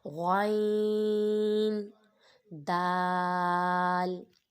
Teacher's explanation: غین بھی حروف مستعلیہ میں سے ہے، اس کو پر پڑھا جائے گا